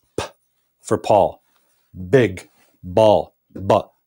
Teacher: Paul and big are different sounds here's how you make them in both cases we put our lips together